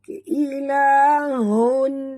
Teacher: bacaannya terang tanpa dengung. Ilahun. Ghain tebal, ya sifatnya lin, walaupun tebal tapi lunak. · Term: izhar halqi